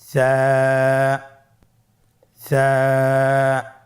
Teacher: জিহ্বার আগা সামনের উপরের দুই দাঁতের আগার সঙ্গে লাগিয়ে উচ্চারিত হয়